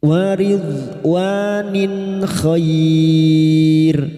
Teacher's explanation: maka bunyi kasar tanwin dibaca jelas tanpa mendengung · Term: idhar halq